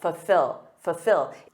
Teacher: Native speakers often drop that first L, I do, and say fulfill, So instead of saying full, ol, with that dark L, we commonly say fulfill.